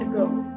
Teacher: The E sound or schwa sound for the first sound in ago